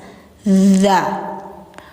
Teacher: ujung lidah menempel gigi atas